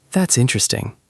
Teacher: completely flat with no emotion, it sounds like you're politely saying you don't care at all.